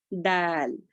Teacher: دال جو ہے باریک پڑیں گے. زبان کی نوک کو سامنے کے 2 دانتوں کے جڑ میں لگانے سے دال ادا ہوتا ہے